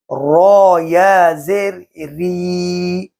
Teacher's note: اس سے پہلے والے لیسن میں نے بتایا را کے نیچے اس وقت کھڑا زیر تھی، اور آج را کے نیچے زیر ہے تو را کو باریک آواز سے پڑھیں گے